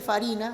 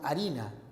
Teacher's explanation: Primero se produce la aspiración de la F. Ya no se dice farina, sino harina.